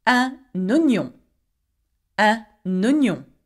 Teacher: oignon begins with the O, so we go with a liaison with a N at the end of un oignon